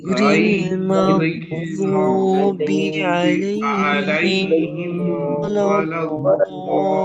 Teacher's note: ضاد کو ایک دم ہی موٹے آواز شروع سے